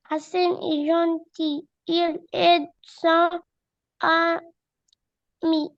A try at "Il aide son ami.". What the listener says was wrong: Son ami, fais la liaison. Son ami